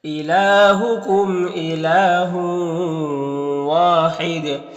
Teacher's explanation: لام میں کھڑا زبر ہے جو الف مدہ کی طرح ہوتا ہے. میم میں اظہار شفوی ہوگا. · یہاں پر تنوین کے بعد واو حروف یومین میں سے تو ادغام ناقص ہوگا